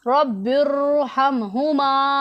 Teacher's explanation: बिर आवाज़ को मोटा करना है, मुंह को गोल करके बारी आवाज़ के साथ पढ़ना है, तो रा हमारा पुर और मोटा पड़ा जाएगा। आपने समझ लिया कि रा साकिन से पहले आर्जी ज़ेर हो तो उसको मोटा पढ़ना है।